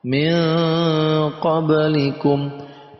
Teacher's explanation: Jadi ada huruf eng antara nun mati dan qaf. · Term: ikhfa